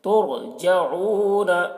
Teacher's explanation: را کو پر پڑھیں گے کیونکہ رائے ساکنہ سے پہلے پیش ہے